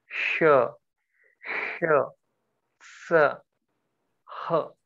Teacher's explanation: Sa means air is thrown out when you pronounce it, like hot air. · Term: Ushma Varna